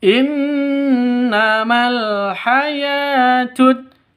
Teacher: Innama di sini ada nun tasydid berdiri sendiri, maka cara bacanya dibaca gunnah musyaddadah, dengung 2 ketukan.